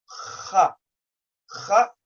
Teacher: the letter kha comes from the top of the throat